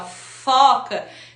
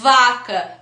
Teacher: no F, ela é surda, ela não tem vibração das cordas vocais